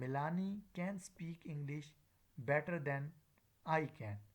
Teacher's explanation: The first can is the weak form while the second is the full form.